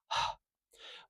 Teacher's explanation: this is the lowest sound in our vocal tract it's all the way at the back of our throat way down where we make the vibrations in our throat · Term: H sound